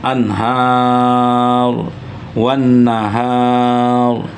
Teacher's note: Maka bunyi ro yang disukunkan itu juga ditebalkan atau ditafhimkan.